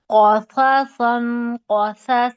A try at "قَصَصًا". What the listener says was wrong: سا کے سو. او کی ساؤنڈ.